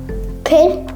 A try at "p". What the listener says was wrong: You keep saying pin. Okay, so think p, p.